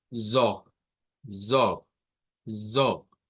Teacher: El sonido que le acompaña acá a esa O con la R no va a sonar a R gutural, va a sonar como una R fuerte del inglés, del español. En este caso diríamos zog, zog, zog.